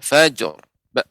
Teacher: Ra-nya lebih ditebalkan, ya, ada getaran dan ditebalkan.